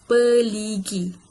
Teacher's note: berlakunya pengguguran konsonan R, iaitu konsonan R ini berada di posisi koda dan menyebabkan berlakunya pengguguran, iaitu PER.